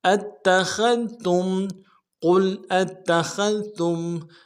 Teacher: تا کو میم ساکن کے ساتھ ملانا ہے، میم ساکن میں اظہار ہوگا